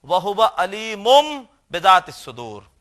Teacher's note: تنوین میں نون کی نہیں بلکہ میم کی آواز نکلے گی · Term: اقلاب